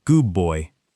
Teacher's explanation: assimilation, where sounds change to be more like their neighbors. Good boy often sounds like goob boy.